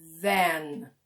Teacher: it's a kind of very open sound like van or son and it's a little bit longer